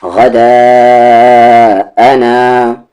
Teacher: مد کے سمبل کے بعد حمزہ ہے، 3 سے 4 حرکت کے ایکول